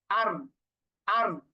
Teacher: জিহ্বার আগার পিঠ উপরের তালুর সাথে লাগিয়ে র। র আপনি সুকুন দিয়ে উচ্চারণ করেন, হামজা র জবর আর, আর।